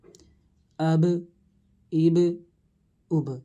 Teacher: آواز کو پھسلایا جا رہا ہے تو پتہ چلا کہ قلقلہ خوب واضح ہو رہا ہے